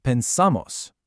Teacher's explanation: The stress moves to the ending, off of the stem. And since the stem isn't getting the stress, it doesn't change.